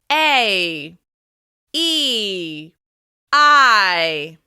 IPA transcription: ei, i, ai